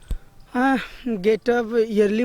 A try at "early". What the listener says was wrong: Not yearly. A lot of students say this yearly. We say I get up early in the morning. Yeah, early.